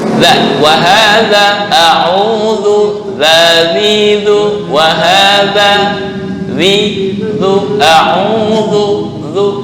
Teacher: Ujung lidah pertemuan dengan gigi seri atas. Ini ujung lidah sini dengan gigi seri atas. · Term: dzal